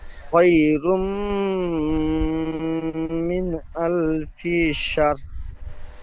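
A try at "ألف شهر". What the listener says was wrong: সার নয়, শাহ। লাস্টে র যেমন উচ্চারণ করতে গেলে মুখটা গোল হয়, ঠোঁট দুটি, ঠিক ওই রকম ঠোঁট দুটি রর আকৃতি আনবেন। আলফি শাহ।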